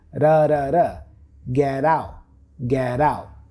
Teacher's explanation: The T for get becomes a flap T.